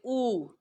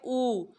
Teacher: اور پیش ہونٹوں کو گول کر کے ادا ہوتا ہے، اور اس کی ساؤنڈ جو ہے وہ ڈبل او کی آتی ہے، او.